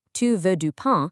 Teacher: A phrase like "Tu veux du pain", meaning "You want bread", only becomes a question through a rising upward intonation at the very end of the sentence. If your voice drops at the end like it usually does in English, you aren't asking if they want bread, you are aggressively commanding them to acknowledge they want bread.